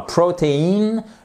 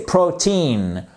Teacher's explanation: Mais quand vous prenez le mot, par exemple, protein, vous voyez que vous avez votre I long ici et pourtant, c'est pas cette syllabe qui est accentuée, c'est pas cette seconde syllabe qui est accentuée, mais c'est bien la première